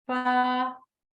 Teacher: होंठों के गीले वाले हिस्से से जब टच होते हैं तो हर्फ फा अदा होता है